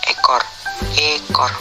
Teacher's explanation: Vokal E. Kriteria: vokal depan, sedang atas, tak bundar, semi tertutup